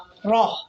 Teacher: کیونکہ را کے اوپر زبر ہے تو آواز موٹی ہے۔ آپ نے یاد رکھنا ہے کہ را کے اوپر زبر آئے گی تو آواز موٹی ہوگی اور اشارہ باہر کی طرف ہوگا۔